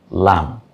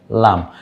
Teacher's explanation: জিহ্বার আগার কিনারা তার বরাবর উপরের দাঁতের গোড়ার সাথে লাগিয়ে